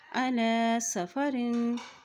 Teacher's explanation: अला की लाम के ऊपर खड़ी ज़बर एक हरकत इसे लंबा अदा करेंगे।